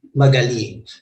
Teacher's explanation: you will observe or you will notice the stress at the end of the syllable